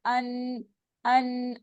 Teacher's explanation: नून की साउंड नाक से होकर आ रही होती है नाक की बांस से न का मखर का ध्यान रखना है